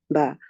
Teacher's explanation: Okay, they are pressed tight to get the sound of ba. It's not a mere touching of the lips for ba. The lips are shut tight to get ba.